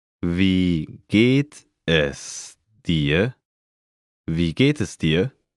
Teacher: Note the rising intonation.